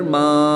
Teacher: میم الف زبر ما، الف مدہ ہوگا، ایک الف اینڈ 2 حرکات کے برابر کھینچ کر پڑھیں گے۔